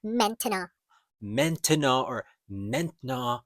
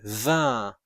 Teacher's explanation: it is not really a N sound with an N. It is actually a nasal vowel sound. This is the sound in the word vin.